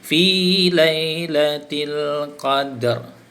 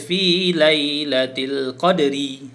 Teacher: Jadi dal tu diqalqalahkan juga, tetapi dimatikan dengan ra.